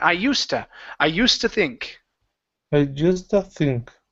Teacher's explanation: no need to pronounce a D. It's a T sound.